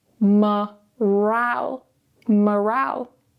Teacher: Now we have the weak syllable at the start, so we're going to use a schwa, morale. Now the second syllable here is stressed. Because it's stressed, we now need to give it a stronger vowel.